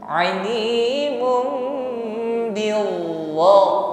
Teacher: Wallahu alimun, dhammah tanwin bertemu ba, ya, dhammah tanwin masuk pada huruf mim, ya, bibir rapat dan didengungkan